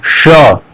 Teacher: ऊपर जुबान जो है ऊपर वाले पैलेट को टच करेगी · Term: तालु